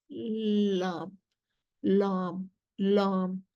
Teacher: लेकिन एक चीज उसमें आ जाती है, a lam mufakhma is pronounced, there is concaving in the middle of the tongue and constriction in the throat, unlike the lam murakaka where this does not happen.